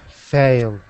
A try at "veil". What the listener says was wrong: Okay, give me a good V sound. Veil.